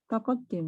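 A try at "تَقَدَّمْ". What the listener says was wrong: Iya, takoddam gitu ya. Bukan takod. fiil, kan ini kan fiil mudhari ya, makanya bukan takoddim tapi ya takoddam. Kalau harokat yang di dal ini kasroh, jadi takoddim.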